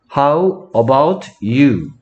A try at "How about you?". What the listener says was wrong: 좀더 빠르게 하면 How about you?